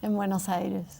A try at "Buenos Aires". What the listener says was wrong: Si dices Buenos Aires, muchos... Mucha gente no te entenderá. Si dices Buenos Aires. They will not understand you because you're saying it with an Argentine accent.